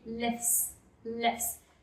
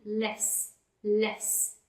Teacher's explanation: I have three consonants after each other, which is F, T, and S. F, T, and S. So in that case, we drop the T and we make it lifts.